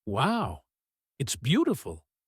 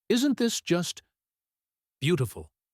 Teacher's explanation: his voice is likely flat, lower, or slightly dragged out